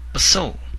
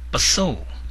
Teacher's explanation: the tone goes higher up